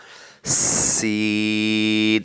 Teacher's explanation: حروف صفیریہ میں تیز آواز سے پڑھا جائے گا ، سین، تیز آواز سے پڑھا جائے گا، یہ بھی حروف